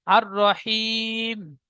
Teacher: আসল আছে আর রহিম, মি আছে, মিম জের মি, মিমের নিচে জেরকে বাদ দিয়ে সাকিন ধরে পড়তে হবে।